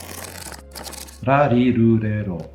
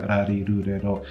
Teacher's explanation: you'll be able to feel that your tongue tip is flapping briefly against your alveolar ridge. That's that fleshy bit just behind your teeth, right? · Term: tapped R